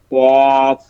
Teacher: 4 নম্বর মাখরাজ জিহ্বার গোড়া তার বরাবর ওপরের তালুর সঙ্গে লাগিয়ে পড়তে হয়